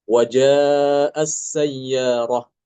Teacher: Imam Al-Kisai baca dengan mengidghamkan ta ke sin.